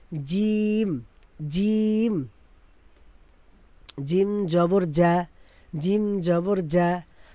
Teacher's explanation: জিব্বার মধ্যখান তার বরাবর উপরে তালের সঙ্গে লাগাইয়া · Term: জিম শক্ত